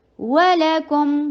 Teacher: وَلَكُمْ, واو short, لا short, کاف کے اوپر ضمہ, ہونٹوں کو گول. میم کے اوپر توسط کا ٹائم دیجیے.